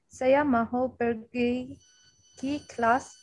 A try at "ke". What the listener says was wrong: This is not ki. This is a ke.